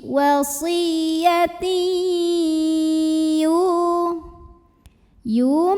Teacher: Maka tanwin kasrahnya masukkan ke ya, lebur dengan dengungan. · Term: idgham bi gunnah